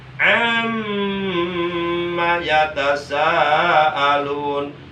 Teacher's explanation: Yang kedua mim guna, berarti huruf mimnya wajib digunakan, ditahan satu alif, dua harakat